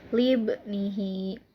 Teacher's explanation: Kenapa disebut dengan qalqalah sugro? Karena huruf qalqalah yaitu ba disukun dan posisinya di tengah kalimat. Cara membacanya dipantulkan secara ringan